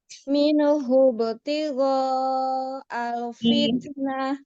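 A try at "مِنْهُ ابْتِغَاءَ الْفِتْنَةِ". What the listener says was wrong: Dialirkan sedikit lagi nunnya. Minhu.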